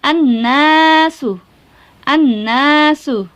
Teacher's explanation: Alnya dibaca nggak? Tidak ya, langsung dimasukkan ke huruf na. Berarti alif lam syamsiah.